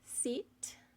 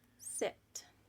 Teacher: For our lips, we have them pulled back for the e sound. We have them very relaxed for the I sound. For our tongue, it is high and back for the e sound. · We have them very relaxed for the I sound. For our tongue, it is high and back for the e sound. It is neutral and relaxed for the I sound. Our jaw stays in place for e.